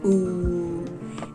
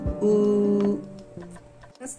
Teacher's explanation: En cuanto a la U, esta cambia un poquito su sonido. La U en el japonés estándar es una U no redondeada.